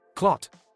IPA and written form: klɒt (Clot)